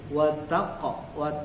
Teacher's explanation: qafnya ini tanda bacanya mati atau sukun, maka dia memantul